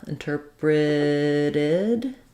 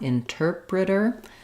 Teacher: when we move to interpreted our T changes to a flap